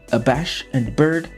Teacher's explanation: we hear that plosive alliteration that mimics the sound of the bird being battered by the merciless winds